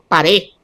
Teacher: la elisión de la D por debilitamiento o aspiración al final de la palabra